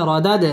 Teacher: দাল কলকলার হরফ ধাক্কা দিয়ে পড়তে হবে